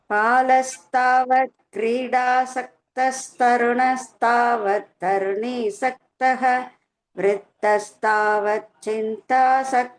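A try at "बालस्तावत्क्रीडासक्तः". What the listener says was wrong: பால அது கொஞ்சம் பாலன்னு காதுல விழுந்தது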